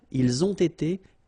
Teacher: You get first the liaison z, and then you get the t